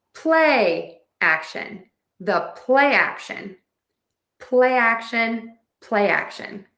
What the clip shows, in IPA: ˈpleɪ ˌæk.ʃən